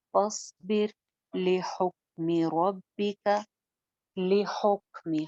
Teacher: हा दरमियान हलक से